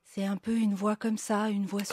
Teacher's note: lorsque il y a une petite fuite d'air, ça crée une petite turbulence de l'air, un petit qui s'entend, en fait, sur la voix.